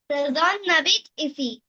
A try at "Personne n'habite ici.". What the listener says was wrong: Good for you.